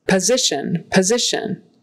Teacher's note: that s is like a z and the t o n is shun